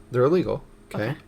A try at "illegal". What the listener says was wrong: You say that so fast that it sounds like you're saying legal.